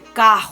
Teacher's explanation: Entonces la R viene a tomar más o menos que pronunciación de nuestra G, pero se escribe con R. Pero se pronuncia como en la garganta. No es como nosotros que pronunciamos la R como con la lengua. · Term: fonética gutural